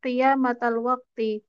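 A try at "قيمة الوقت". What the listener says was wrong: Tadi bukan qiyamah tapi dibacanya qimah. Qimah.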